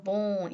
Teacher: 예를 들면 아까 말씀드린 bone 같은 경우에서도 그죠? 이 nasalized vowel인 o 사운드가 그래서 bone 이런 사운드가 뒤에 나오는 nasalized consonant의 영향을 받아서 이 o 사운드가 nasalized 되지 않습니까?